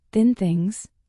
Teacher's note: For think, put your tongue between your teeth and push air out.